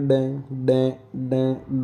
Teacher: बोल के देखो एक बार थोड़ा सा, जैसे ही आप बोलेंगे डे डे डे डे, तो नाक से कुछ आवाज़ आ रही है, नाक से कंपन आ रहा है